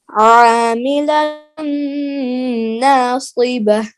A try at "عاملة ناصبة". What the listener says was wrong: دیکھو ایک تو وجوہی میں غنہ تھا نا ایک یہ عاملتن میں بھی نون مشدد ہے نا تنوین کا ادغام ناقص ہو رہا ہے عاملتن ناصبہ عاملتن ناصبہ